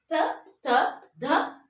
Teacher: ಹಲ್ಲು ಹಲ್ಲಿನ ಸಹಾಯದಿಂದ ಉಚ್ಚರಿಸಲ್ಪಡುವಂತಹ ಅಕ್ಷರಗಳು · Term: ದಂತ್ಯ ಅಕ್ಷರಗಳು